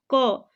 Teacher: जो अल्प प्राण व्यंजन है वो है आपका क